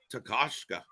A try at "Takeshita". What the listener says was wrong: Close, but Takeshita. Emphasis on the wrong syllable.